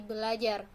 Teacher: Mestinya, kalau tidak ada perubahan menjadi berajar, tetapi karena ada 2 bunyi R, maka R yang pertama diperbedakan atau didisimilasikan menjadi L, sehingga menjadi belajar. Karena perubahan tersebut sudah menembus batas fonem, yaitu R merupakan alofon dari fonem R, dan L merupakan alofon dari fonem L, maka disebut disimilasi fonemis, atau yang biasa dikenal dengan disimilasi sinkronis.